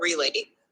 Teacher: re is unstressed and late is stressed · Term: I am